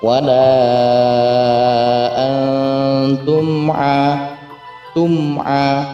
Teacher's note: Selanjutnya ada izhar syafawi di situ, ada mim sukun bertemu dengan huruf ain, yakni tanpa adanya dengungan